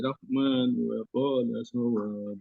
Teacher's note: Kalau nyambung Rahmannya 2 harokat. Tapi kalau berhenti Rahman lebih dari 2 harokat.